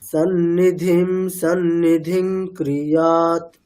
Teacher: আমি যুক্তাক্ষরের শুরুতে টাইম নিচ্ছি, অর্থাৎ প্রথম নকারটাতে যুক্তাক্ষর নয় নয় আছে, প্রথম নকারটাতে একটু সময় নিচ্ছি।